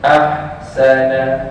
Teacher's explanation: Jangan kita overlap bunyi sin masuk ke dalam hal.